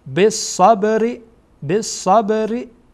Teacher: ر هم گفتین در اینجا ترقیق خوانده میشه باریک خوانده میشه